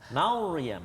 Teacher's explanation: Jadi bila kita sebut kalimah Maryam itu sendiri, yang tebalnya ra. Mim tu tak.